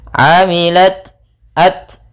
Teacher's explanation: Amilat, di sini tak sukun, tak sifatnya ada sifat hamas, mengalirnya nafas sedikit